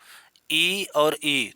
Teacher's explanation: ई और ई दोनों को बोलोगे तो मुख थोड़ा बंद रहेगा। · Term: संवृत